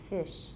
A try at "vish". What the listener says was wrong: Now voice the sh part. Vish. Vish.